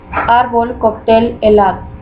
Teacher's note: Se conocen también como graves. Estas llevan la fuerza de pronunciación en la penúltima sílaba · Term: palabras Llanas, Palabras llanas